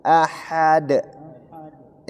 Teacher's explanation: dalnya tipis dan menjadi huruf qalqalah kubra karena terakhir.